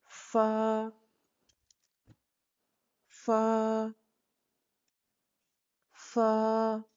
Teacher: सामने वाले दांतों की नोक को निचले होंठ के अंदरूनी गीले हिस्से पर लगाते हुए बारीक आवाज में इसको अदा करें।